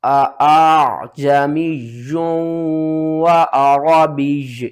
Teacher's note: آپ نے اس حمزہ کو آسان کر کے پڑھنا ہے، نرم کر کے پڑھنا ہے، کیونکہ یہاں پر دو حمزہ اکٹھی آ رہی ہیں تو اس کو تھوڑا سا کھینچ کر آپ نے عین کے ساتھ ملانا ہے۔ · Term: تسہیل